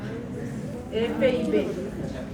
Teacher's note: El labio inferior con el borde de los incisivos superiores, F y B.